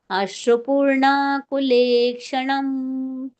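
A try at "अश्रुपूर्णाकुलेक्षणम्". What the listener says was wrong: ಎಂಡಿಗೆ ಅನುಸ್ವಾರ ಬರುತ್ತಲ್ಲ ಮಾತಾಜಿ, ಅಶ್ರುಪೂರ್ಣಾಕುಲೆ ಕ್ಷಣಂ. ಹೀಗೆ ಎಳಿಬೇಡಿ. ಅಶ್ರುಪೂರ್ಣಾಕುಲೆ ಕ್ಷಣಂ ವಿಷೀದಂತಂ ಇದಂ ವಾಕ್ಯಂ ಉವಾಚ ಮಧುಸೂದನಃ.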